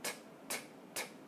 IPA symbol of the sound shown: t